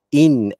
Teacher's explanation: nun mati yang ada tanda sukun ini tidak perlu disebut dengan dengung hanya dibaca jelas dan nyata